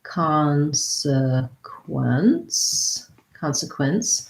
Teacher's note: we have first syllable stress